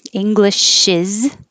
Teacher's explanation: i change that s to a z to represent that it really does sound like a z